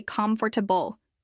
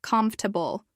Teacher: Many people want to say comfortable with 4 syllables. But in natural speech, it often sounds more like comfortable with only 3 syllables